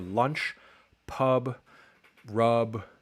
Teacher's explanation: open mid back so that's sort of low mid unrounded vowel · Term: wedge